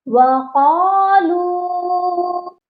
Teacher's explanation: لام کو کھینچ کر پڑھنا ہے ایک الف کے برابر، کیونکہ لام کے ساتھ واو مدہ ہے